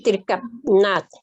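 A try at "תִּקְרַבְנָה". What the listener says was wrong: sin la T al final. Tikrabna.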